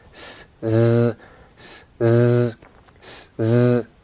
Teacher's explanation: Okay, that's your We call that voicings from the vocal cords, or your voice box, and we call that kind of sound voicing. So z is a voiced consonant, s is a voiceless or unvoiced consonant.